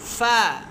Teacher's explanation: ফা, ফাটা কি ঠোঁট, আর ওই যে উপরে যে দুইটা বড় বড় দাঁত আছে এই দুইটা, ফা ঠোঁটের ভিজা অংশ, ঠোঁটের ভিজা অংশ থেকে উচ্চারিত হয় ফা